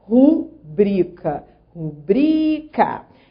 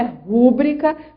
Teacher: a sílaba tônica é o bri. Trata-se de uma paroxítona.